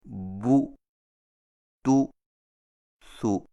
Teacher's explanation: ہونٹوں کو ذرا آگے کو بڑھاتے ہوئے مضبوطی سے گول کر کے پیش کو دبی ہوئی آواز سے ادا کیا جائے